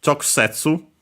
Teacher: Notice the U, as usual, barely heard if at all, the one of ku because it's between unvoiced consonants. The one of the two can also be barely heard, if at all, if we then have a pause because of the preceding unvoiced consonant.